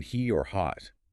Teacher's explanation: The sources call it the voiceless vowel consonant, and that's literally what it is. H isn't really its own sound. It's just voiceless breath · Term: H sound